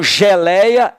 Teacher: então geleia tem um ditongo decrescente oral